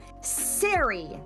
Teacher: you might end up with a deletion where instead of scary they go Siri they drop that K